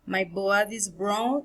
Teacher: B are bilabial, that is, the lips are pressed together.